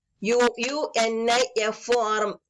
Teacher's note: Although uniform starts with the vowel U, it starts with the consonant sound YU.